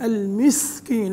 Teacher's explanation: لابد من إخراج السين من مخرجه الصحيح إذا سكنت، لأنه من حروف الهمس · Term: الهمس في السين